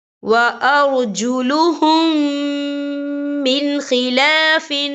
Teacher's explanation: وَأَرْجُلُهُمْ مِنْ خِلَافٍ، یا دیکھیں وَأَرْجُلُهُمْ مِنْ، یہاں نون ساکن ہے، نون ساکن کے بعد جو ہے خا آ رہا ہے، اور خا جو ہے حروف ہلکی کا ورڈ ہے، تو ہم یہاں اظہار کریں گے، ہم اسے بنا غنّے کے پڑھیں گے، یہاں غنّہ جو ہے بالکل نہیں کیا جائے گا۔